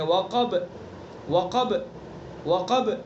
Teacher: قاف کو پر پڑھیں گے اور با کے اندر بھی قلقلہ کریں گے، یعنی آواز کو پیچھے لوٹائیں گے